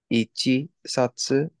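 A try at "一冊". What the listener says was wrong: So this is ichi and this is satsu. However, satsu, we just told me, was voiceless. So this means something's going to happen to chi. Similarly, if this was a tu, the same thing would happen.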